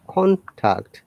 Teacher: Higher intonation or rising intonation.